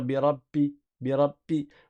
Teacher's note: certains ils vont appuyer trop fort sur les lèvres de sorte à ce que ça ressemble à un p